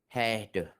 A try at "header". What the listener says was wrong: again, header. Header. There's an R at the end. I need to hear the R at the end. Header.